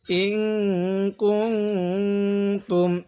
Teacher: এই নুন সাকিনের পরে এই কাফটি হলো ইকফার হরফ, যার কারণে এই নুন সাকিনের মধ্যে আমরা গুনাহ করব। তাহলে হামজা নুনজের ইং, কাফ লাগবে এই নুনের সাথে কুং, তামিম পেস্তুম, ইং কুং তুম, এরকমভাবে পড়ব।